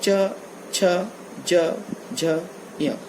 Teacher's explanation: इसके बाद तालु कहलाता है जो जीभ दांत के ठीक पीछे वाला हिस्सा, जहाँ च को बोलते समय, च का उच्चारण करते समय जीभ जहाँ जाती है वो स्थान कहलाता है तालु।